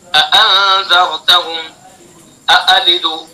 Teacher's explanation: دونوں حمزہ کو تحقیق سے پڑھنا ہے، تحقیق یعنی خوب صاف صاف ادا کرنا ہے